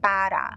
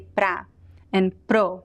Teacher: in spoken language we never say para we always say pra and pro